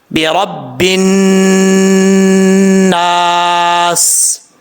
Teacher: با کے اوپر شد ہے، را کو با سے ملائیں گے، را با زبر رب، با نون زیر بن، رب النا، برب الناس۔ نون کے اوپر کیونکہ شد ہے، ایک الف کی مقدار غنہ کر کے پڑھیں گے، آگے الف ہے، ایک الف کی مقدار لمبا بھی کیا جائے گا۔ · نون کے اوپر کیونکہ شد ہے، ایک الف کی مقدار غنہ کر کے پڑھیں گے، آگے الف ہے، ایک الف کی مقدار لمبا بھی کیا جائے گا۔ آگے جو لاسٹ پہ ہے سین ہے، سین سیٹی کے ساتھ پڑھا جاتا ہے، اور آگ کے اوپر زبر ہے، راپور پڑھا جائے گا۔